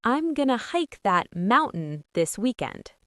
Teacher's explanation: A glottle stop is when you stop the air in your throat instead of making a clear t